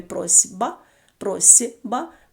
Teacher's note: теж дзвінки наприклад в слові просьба просьба пишемо літеру с але під впливом звука б дзвінкого звук с глухий вимовляється як парний йому з